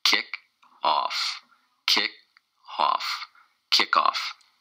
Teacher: it's two syllables and the stress is on the first syllable